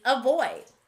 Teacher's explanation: this word begins with a but it sounds like uh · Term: sneaky schwa sound